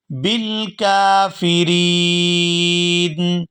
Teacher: وقف کی صورت میں نون ساکن ہو جائے گا اور نون ساکن ہونے پر یہاں مد ہوگی